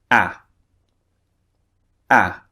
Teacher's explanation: the second vowel the mouth is much further open